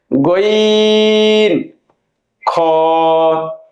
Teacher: তিন নাম্বার মাখরাজ হলকের শেষ হইতে অথবা কন্ঠনালীর শেষ অংশ হইতে উচ্চারিত হয়।